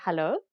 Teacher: usually afrikaners will just say hello with a rising intonation to indicate that it's a question